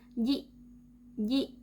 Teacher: suara kita secara otomatis terputus ketika kita mengucapkan huruf Hamza. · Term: karakteristik Shiddah